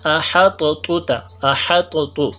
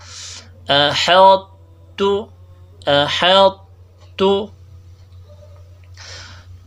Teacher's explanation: طا کا میں کے اندر جو استعلا ہے، جو موٹائی ہے، اس کا جو ہے اشمام ہم نے دینا ہے، اظہار کرنا ہے. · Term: ادغام ناقص